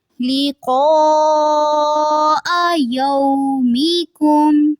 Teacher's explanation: یہاں پہ جو قاف ہے اس کو پر رکھیں گے اور مد ہے یہاں پہ، اس کو لمبا کریں گے